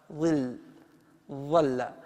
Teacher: رأس اللسان يخرج من بين الثنايا العليا والسفلى، الثنايا العليا والسفلى، فليس فيه أي إشكال. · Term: الضاء